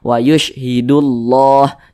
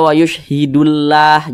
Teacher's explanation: di sini yang kita temui tanda baca damah maka lafaz Allah dibaca tebal